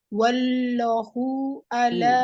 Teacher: Wallahu, lamnya tebal. Lafzul jalalah tebal.